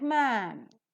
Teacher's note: the pronunciation of man is like man, using the front vowel between half open and open, unrounded sound.